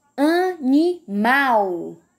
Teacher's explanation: a sílaba que o pronunciei mais forte foi o mal então mal é a sílaba tônica da palavra animal